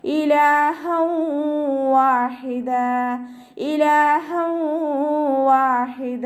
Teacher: തൻവീനിലുള്ള നൂനിന്റെ സൗണ്ടിനെ വാവിലേക്ക് ലയിപ്പിച്ച് ഉന്നയോടുകൂടി ഓതികൊടുക്ക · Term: ഇദാം ബിഗുന്നയുടെ, ഇദാം ബിഗുന്ന